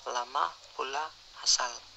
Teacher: Konsonan L, bunyi apikoalveolar sampingan bersuara